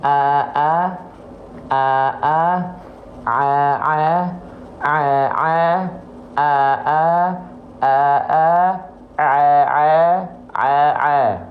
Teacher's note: pastikan Ain dilafalkan dari bagian tengah tenggorokan kita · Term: huruf Ain